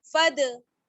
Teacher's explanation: नहीं होगा, बल्कि फा को हम दाल के साथ मिलाएंगे, फद, दाल साकिन है इस वजह से कलकला होगा